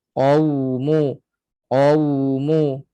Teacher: Qau sempit sikit, sempit lagi daripada waw mat punya lubang. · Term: waw lin